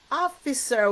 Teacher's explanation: Oh, I remember ER is our controlled vowel. This is a vowel but it's controlled by the R because you'll hear the R more than E